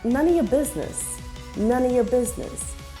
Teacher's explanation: First, Olive takes on the schwa sound, Then the or in your is also pronounced with a schwa, and it is reduced to ya.